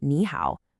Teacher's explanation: When you get two of those dipping third tones in a row, like in the famous greeting nihow, the first one actually changes. You say it like a rising second tone.